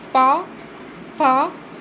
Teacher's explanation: इसको हम जब बोलते हैं तो हमारे दोनों होठ आपस में टकराते हैं, तभी ये वर्ण निकलता है।